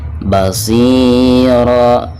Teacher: Basira, nah ini dihukumi mad iwad ya. Jadi pertama hilangkan suara tanwin ra-nya, lalu digantikan dengan bacaan panjang 2 harokat. · ada kasrah shad ya, lalu berhadapan dengan ya sukun, maka dihukumi mad tabi'i dan dibacanya 2 harokat.